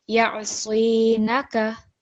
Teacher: And then the noon is just fatha. So it's just 1 second.